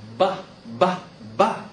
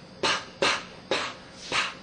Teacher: actually counterparts if you can make p you can make B the only difference is voicing voiced or voiceless consonants so a voice consonant we can feel here in our our